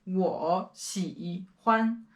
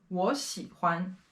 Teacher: 喜欢 The interesting thing here is that for the first two characters, they both have the third tone, which is very difficult to pronounce when they are put together. So when we are actually saying this phrase, we change the first character from the third tone to the second tone.